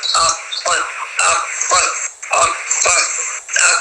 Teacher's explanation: زبان کی جڑ کبے کے قریب جب نرم تالو سے لگے تو قاف ادا ہوتا ہے. قاف بھاری اور پر ہے تو یہ کیا ہے کہ تھوڑا سختی سے ادا ہوتا ہے.